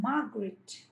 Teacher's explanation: So stress is on the first syllable.